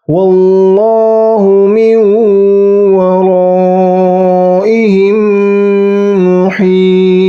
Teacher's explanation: Ingat, ta qalqalahnya berat atau dipantulkan dengan berat atau keras. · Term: qalqalah kubra